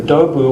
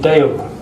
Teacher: because of vowel assimilation, instead of dobu we get deo, yeah, and we get a vowel shift and a doubling.